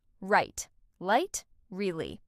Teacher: R and L sound, right versus light. R is pronounced with your tongue curled back, while L touches the roof of your mouth.